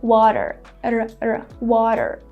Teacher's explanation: to make this sound, you just need to tap quickly on your gum ridge with the tip of your tongue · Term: flap T